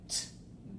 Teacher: this is voiceless so no vocal vibration here